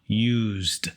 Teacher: that s makes a z sound used which is voiced